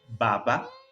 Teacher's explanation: trata de cerrar la boca cerrar los labios por lo tanto se trata de una consonante oclusiva explosiva que se pronuncia con los labios cerrados en el sentido de que primero acumuló aire cerrando los labios